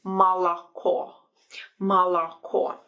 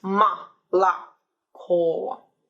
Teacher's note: the stress is only at the end, on the last vowel. That's why we say O at the end, but A in the middle